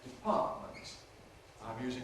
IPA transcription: dɪˈpɑːʔmənt